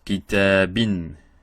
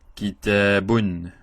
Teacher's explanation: So, a with the tanween, it becomes an. I with the tanween, it becomes in. And u with the tanween, it becomes un. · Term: nunation